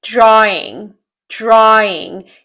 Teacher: Здесь у нас просто переход от звука А в звук lex A. Здесь нет никаких дифтонгов и нет звука В.